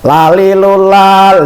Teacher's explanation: Makhrajnya ujung lidah dengan langit-langit yang atas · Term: lam